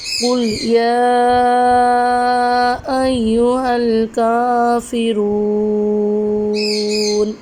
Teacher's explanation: قل یا ایھا الکافرون، قاف لام پیش قل، جی قاف حروف مستعلیہ ہے، یا کے اوپر کھڑی حرکات اور چھوٹی مد کا قاعدہ ہو رہا ہے۔ ادھر ہم یا کو 3 الف کی مقدار میں لمبا کریں گے، را کو پر پڑھیں گے کیونکہ را کے اوپر پیش ہے، اور وقف کی صورت میں ادھر مد عارض کا قاعدہ ہوگا۔